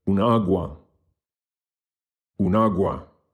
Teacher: the accent or the stress falls on the first A.